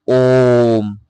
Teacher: तो जैसे कि ओम तो यह क्या हो गया हमारा प्लुत स्वर हो गया